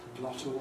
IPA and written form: ˡglɒto (glottal)